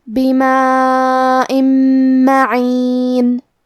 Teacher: کلمت بما میں مد واجب متصل ہے، لہذا ہم اپنی آواز 4 مد کے برابر لمبی کریں گے. آخری میں حمزہ کے نیچے تنوین زیر ہے، پھر حرف المیم ہے.